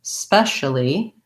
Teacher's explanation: making sure I have s as the first sound. I don't want any vowel sound before it. Specially, long on special, on the spe, and short on the uli, specially.